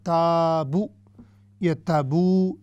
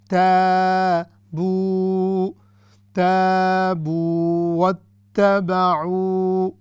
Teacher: تو یہ ہوگا الف مدہ اینڈ واو مدہ، دونوں کی مقدار ایک ہی طرح کی ہوگی ، تو ہم نے ایسے نہیں کرنا تابو یا تابو، نہیں،